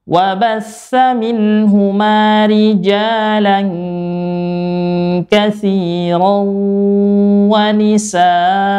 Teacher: Bila waqaf an maka dibaca a panjang 2 harokat seperti ma dibaca panjang 2 harokat.